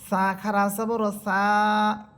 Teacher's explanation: দেখেন এক আলিফ পরিমাণ আমি টেনে পড়তেছি, বা 1 সেকেন্ড পরিমাণ আমি সা হরফটাকে টেনে পড়তেছি।